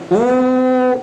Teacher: ketika kita ucapkan U, ini lidah kita terdorong ke belakang. Jadi ada naiknya.